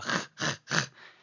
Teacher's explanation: Now, when the dot is not present, as you see here, the letter is referred to by its second name, which is chaf, a voiceless uvular fricative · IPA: /χ/